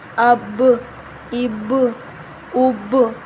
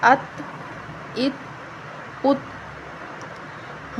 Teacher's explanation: اب جو با کی آخر میں آواز آ رہی ہے اس کا مطلب کہ ہم اس پر قلقلہ کر رہے ہیں، ٹھیک ہے؟ اب، اب، اب، اس طرح آگے پڑھیں گے۔